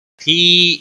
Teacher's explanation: یا مدہ ہے، ایک الف کے برابر کھینچ کر پڑھیں گے